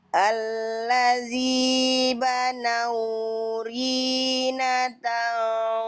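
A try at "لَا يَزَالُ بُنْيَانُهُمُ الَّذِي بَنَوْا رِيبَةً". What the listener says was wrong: Riba, bukan Rina ya. Kalau Rina guru saya waktu SD.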